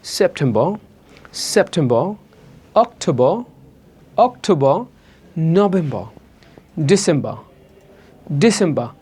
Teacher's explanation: যদি কোনো ওয়ার্ডের শেষে আর থাকে, সাধারণত ব্রিটিশরা পড়ে না